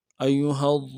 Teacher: ہا کو آگے ضاد کے ساتھ ملائیں گے ، ہا کو نم سے ادا کریں گے، ضاد کو موٹا